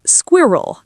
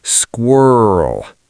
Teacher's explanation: British is squirrel, two distinct parts. American, squirrel. One long growling noise.